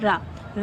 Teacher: रा जो है ये आपका वर्तस्य, लुंठित, शगोष, अल्प प्राण व्यंजन है